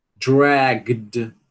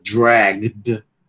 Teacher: Porque o som g, né? É um som vozeado, então vai atrair um som vozeado no ED final.